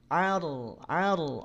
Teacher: rnya tebal sifatnya tawasud bainiah nya tidak dialirkan seluruhnya tidak diputus seluruhnya